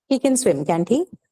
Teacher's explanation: this person will agree so how will I say this statement he can swim can't he with a falling tone